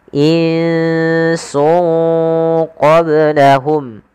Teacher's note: cara membacanya itu menyamarkan suara tanwinnya atau suara nunnya ke huruf setelahnya maka Nun yang di sini kita sarkan ke huruf Sin sungnya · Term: Ikhfa, ikhfa